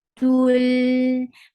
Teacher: 2 counts long because wow sakina there is dhamma before it